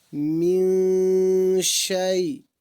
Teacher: یہاں پر بھی نون ساکن کے بعد شین حرف اخفا میں سے آ رہا ہے، اس لیے اخفا حقیقی ہوگا